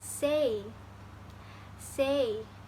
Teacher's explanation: in these vowels there is a combination between a and e